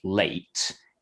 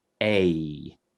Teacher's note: we call that a diphthong, basically kind of two sounds that kind of glide from one to the other · When I'm saying that A vowel sound in the middle of a word like late, if you're listening really carefully, you can hear that it sort of changes a little bit during the time that I'm saying it. It starts a bit like and it finishes a bit like E, and it kind of glides between the two.